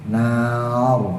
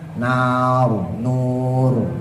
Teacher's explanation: tebal karena jatuh setelah harakat fathah Nar bacanya monyong ya mencucu Ya pokoknya kalau jatuhnya setelah fathah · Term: tafkhim tebal